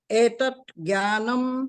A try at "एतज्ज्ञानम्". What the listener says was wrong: एतत नहीं, एतज, एतज, एतज